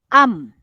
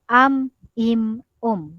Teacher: Jadi bibir atas dan bibir bawah bekerja sama, dia tertutup. Am, im, Jadi keluarnya bunyi huruf mim itu berkenaan tentang bibir atas dan bibir bawah.